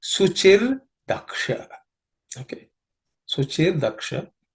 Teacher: So the Visarga in the Suchihi, the last Visarga, becomes Ir, and that's how you get Suchir Daksha.